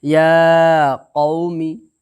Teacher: یا قو میم زیر می، میم کے نیچے زیر کی حرکت ہے، زیر کی حرکت کو جلدی پڑھیں، تھوڑا بھی نہ کھینچیں، زیر کی آواز نیچے کو جاتی ہے، ٹھیک ہے؟